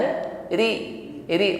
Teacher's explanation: rnya harakat kasrah diringankan pengucapannya